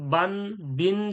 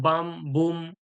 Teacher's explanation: সাকিন বা এর পরে নুন সাকিন বা তানবিনের পরে কি এই ছোট্ট নুনের আওয়াজটাকে পরিবর্তন করে মিম দিয়ে পড়া হবে তখন আর নুন সাকিন আর তানবিনের আওয়াজটা থাকবে না তখন বান বিন ছিল সেটা মিম দ্বারা পরিবর্তন হয়ে যাবে বাম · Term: ইকলাব